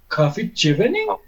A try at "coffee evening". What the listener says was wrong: Not J, it is ye sound. Ye in like yet. Coffee evening. Coffee evening. Coffee evening. Coffee evening. Evening.